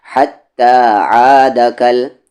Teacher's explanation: عین کا بھی مخرج مڈل تھروٹ اور ہا کا مخرج بھی مڈل تھروٹ یعنی بیچ والا حلق